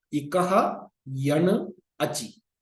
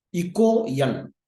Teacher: So, Ikaha followed by Yan, the Sandhi applied here is, Ukara Adesha Sandhi for Visarga. So, the A followed by Visarga followed by a soft consonant, the Visarga becomes first U and then it becomes O. So, that is how it has become as Iko Yan.